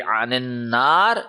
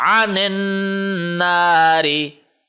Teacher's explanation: When we are stopping, then it will be anin nar. When we are not stopping, then it will be zuh ziha anin nari. You are not allowed to stretch the ha.